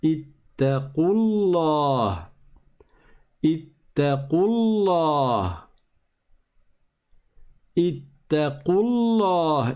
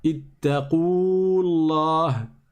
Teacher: On ne prolonge pas parce que le waw disparaît à l'oral.